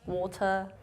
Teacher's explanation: A lot of people don't say R, they just say water, for example.